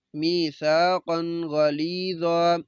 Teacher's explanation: میم زیر یا می، سا زبر الف سا، می سا، قاف دو زبر قن، می ساقن، غین زبر غا، لام زیر یا لی، می ساقن غلی، وا دو زبر الف وا، می ساقن غلیظا۔ ادھر بھی قاف کے اوپر دو زبر تنوین ہے، بعد میں غین حروف حلقی میں سے، تو ہم غنہ نہیں کریں گے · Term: اظہار